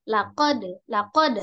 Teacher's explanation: hanya pantulan saja bukan laqada